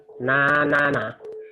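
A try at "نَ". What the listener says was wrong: Nggak ada yang panjang.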